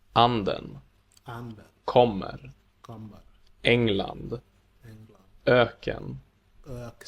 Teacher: In words with this accent, the pitch on the stressed syllable goes up and then down again in the unstressed syllable that follows. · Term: accent 1